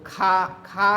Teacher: खा के उच्चारण में ज्यादा वायु निकलेगी मुंह से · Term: महाप्राण